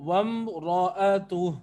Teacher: میم ساکن ہے، اس کے بعد را ہے تو اظہار شفوی ہے، ٹھیک ہے، اور را موٹا ہے تو وامرأتہ. · کیونکہ را پہ زبر ہے تو را موٹا ہے